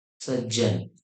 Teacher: सत आणि जन अशी ज्यावेळेला होईल त्यावेळेला इथ त चा बदल ज मध्ये होतो